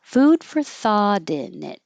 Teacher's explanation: I'm not making a perfect or because it's just quicker to say for and not round my lips.